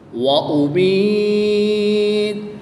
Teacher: یا ساکن سے پہلے حرف کے نیچے زیر ہے تو یہاں پر یا مدہ ہوگا، یا مدہ کے بعد تا کی پیش کو وقف میں ساکن کر دیں گے اور یہاں پر وقف کی حالت میں مد عارض ہوگی، 2 سے 3 الف تک کھینچ کر پڑھیں گے۔